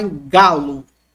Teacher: com esse G duro, gutural